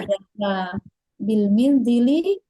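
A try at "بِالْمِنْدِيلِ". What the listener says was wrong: Bil mandili, ini mimnya itu harusnya fathah ini.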